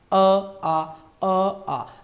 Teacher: जीभ आगे से बिल्कुल सक्रिय नहीं है क्योंकि कंठ भाग कहाँ है? पीछे है · अ आ का जब आप उच्चारण करेंगे तो जिह्वा कंठ भाग से सक्रिय रहेगी